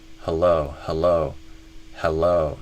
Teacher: I might even do, instead of a he, I might even go to like a schwa, like a huh.